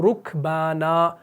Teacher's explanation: را کے اوپر پیش آیا، یعنی را مضموم ہے، تو اس صورت میں ہم نے را کو کیسے پڑھا؟ پر پڑھا، موٹا پڑھا